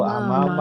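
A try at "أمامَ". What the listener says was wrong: Mimnya yang pertama panjang.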